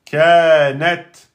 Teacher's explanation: Là, c'est la lettre ta soukoun. La lettre ta soukoun, elle n'est pas qalqala. Par contre, on bloque et on laisse sortir le souffle.